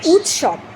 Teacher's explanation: খণ্ডের ত দন্তের স, দুটোই কিন্তু একে অপরের প্রভাবে পরিবর্তিত হয়ে যাচ্ছে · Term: অনন্য সমীভবন